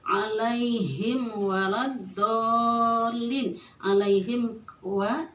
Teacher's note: mim sukun ketemu wawu, izhar syafawi